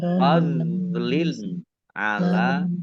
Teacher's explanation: kasroh tanwin bertemu dengan huruf ain, bacaan izhar dibaca jelas